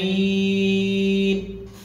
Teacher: نمد تلك الياء مدا متوسطا، أربع حركات